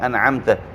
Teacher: میم به د خپل مخرج څخه بېله غونې ښکاره کېږي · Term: اظهار شفوي